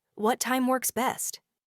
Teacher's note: what time works best carries that perfectly upward intonation of a polite inquiry